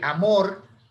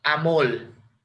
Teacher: consiste en pronunciar una L en lugar de una vibrante simple, de una R. En vez de decir amor, amol. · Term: lambdacismo